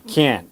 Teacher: And the T is not pronounced. How will you know it's negative? Intonation. It goes down.